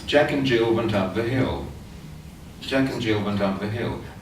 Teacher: one intonational phrase, consisting of 3, 4 rhythmic groups